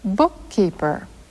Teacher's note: stop our breath for an instant with our mouths in position for the following consonant sound. The length of that instant is exactly the length of one syllable.